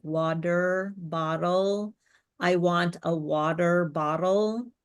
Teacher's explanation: So if a t which American English uh us often reduces to a d sounding like water bottle